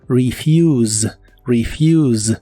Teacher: pronuncia como I y pronuncias otra I antes de la u esta palabra termina con el sonido de la s vibrante que suena como la z inglesa · la e se pronuncia como I y pronuncias otra I antes de la u esta palabra termina con el sonido de la s vibrante que